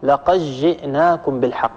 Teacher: إدغام صغير بإدغام الدال الساكنة في الجيم التي بعدها